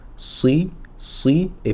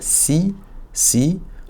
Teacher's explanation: je vais avoir l'arrière de la langue qui va se relever ça va creuser un petit peu le milieu et le son va rempl remplir cet espace si si pour le sige. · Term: sad